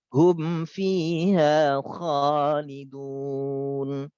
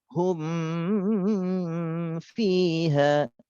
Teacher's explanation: Nah, mim sukun ketemu selain huruf ba dan huruf mim, itu semuanya dibaca idhar. Mimnya jelas dan tanpa gunnah.